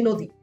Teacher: বাট আমরা দেখা যাচ্ছে যদি আমি নদী লিখি, মনে করো নদী, আর সেক্ষেত্রে আমরা কিন্তু এরকম বলি না নদী, আমরা কিন্তু একেবারে দীর্ঘ উচ্চারণ করি না, যদিও এখানে দীর্ঘ ইকার মানে ব্যবহৃত হচ্ছে, কিন্তু উচ্চারণের ক্ষেত্রে কিন্তু আমরা হ্রস্ব ইকারের এটাকে প্রাধান্য দিচ্ছি, জাস্ট আমরা বলছি নদী।